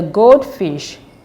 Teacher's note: The first word here is gold, and the second word is fish. The stress should be on the first word, which is gold.